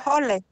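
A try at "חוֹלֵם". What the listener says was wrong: And then get the mem at the end, cholem.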